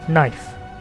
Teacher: In Middle English, it was pronounced knife, but after the vowel shift, the K became silent and the E turned to diphthong I